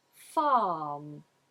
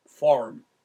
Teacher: i do a long vowel AH but did AR and made the R rhotic